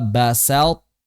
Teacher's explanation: Jadi masuk ke huruf ta dengan masih menyisakan sifat itbaq pada huruf dari huruf th. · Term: idgham naqis